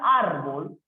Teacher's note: la palabra árbol es una palabra que tiene mayor fuerza de voz en la sílaba ar, que es la penúltima sílaba. Pero como termina en L, entonces se debe tildar.